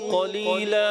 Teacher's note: آخر میں قلیلا، بہت زیادہ لمبا بھی نہیں کرنا، ایک الف سے زیادہ نہیں جائیں گے